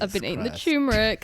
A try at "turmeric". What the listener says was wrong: Turmeric. It sounds like you spell it with C-H-U. Turmeric.